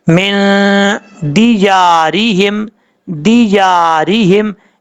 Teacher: نون ساکن کے بعد دال آ رہا ہے، حروف اخفا میں سے ہے، اس لیے یہاں پہ نون ساکن کا اخفا ہوگا